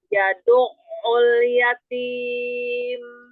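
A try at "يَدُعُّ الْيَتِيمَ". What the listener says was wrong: Alirkan. Huruf ain sukunnya alirkan. Yadu', yadu'. Alirkan huruf yang ain sukunnya alirkan sampai ketemu huruf ain yang dhammah. Yadu'ul yatim. Enggak terputus. Jadi enggak ngerem, enggak.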